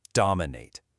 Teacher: Listen to the stress on the first syllable, dominate.